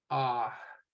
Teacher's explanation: A but the longer ah sound I put with an ah kind of has that H wisp or breath of air at the end kind of drawing it out